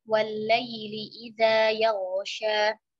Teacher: huruf waw makhrajnya kedua bibir